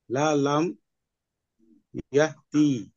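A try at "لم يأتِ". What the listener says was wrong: টান হবে না, ইয়াতি। লা লাম ইয়াতি।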